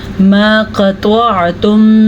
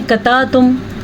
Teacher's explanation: सबसे पहले क़ाफ को मोटा करके पढ़ना है, त्वा को भी मोटा करके पढ़ना है, क्योंकि क़ाफ, त्वा, ख़ा, ज़्वा, ज़्वाद, स्वाद ये वो हरूफ हैं जो कि पुर पढ़े जाते हैं, जिसमें क़ाफ और त्वा भी शामिल हैं।